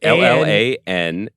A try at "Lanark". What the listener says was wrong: Yeah, and the second L is silent.